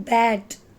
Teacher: A sound is in bad. Bad is open front unrounded vowel. It is A sound.